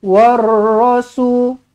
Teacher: Ra ni ada sabdu, maka kena tekankan je lah